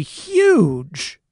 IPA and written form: xjudʒ (huge)